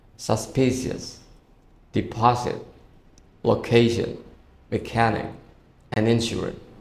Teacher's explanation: So we put stress on the second syllable. We do not put stress on the first or the last syllable.